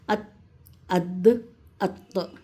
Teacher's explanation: تو یہ 3 حروف جو ہیں زبان کی نوک، سامنے کے جو دانت ہیں ہمارے، تو سامنے کے دانت کی جڑ سے یہ 3 حروف نکلتے ہیں